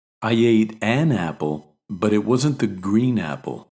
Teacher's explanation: we also stress the indefinite article to emphasize that the noun that follows is completely random and not a definite person or thing